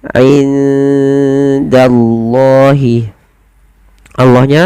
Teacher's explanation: lafal Allah tetap ditebalkan, yaitu lam tafkhim · Di sini kita baca dengan bacaan ikhfa. Cara membacanya menyamarkan suara nunnya kepada huruf dal, tidak dibaca indallah tapi dia inda ya, langsung disamarkan kepada huruf dal, ke huruf dal dan ditahan.